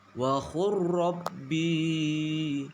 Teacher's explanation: Cara membacanya yaitu gunnah atau dengung, yakni dengan meleburkan huruf lam ke dalam huruf ro dan ditasydidkan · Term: idgham mutakharibain